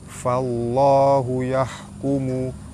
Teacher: baris atas bertemu dengan lam jalalah dibaca tebal.